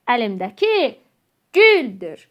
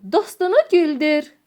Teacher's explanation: Burada vurğu ünün üzərinə düşəcəkdir. Birinci ünün üzərinə düşəcək.